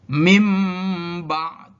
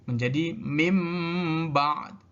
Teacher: Nun mati bertemu dengan ba, nunnya berubah menjadi mim. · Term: iqlab